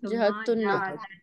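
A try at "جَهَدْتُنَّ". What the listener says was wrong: जा को जरा वो थोड़ा लंबा करें ताकि पता चले। हाँ, जा।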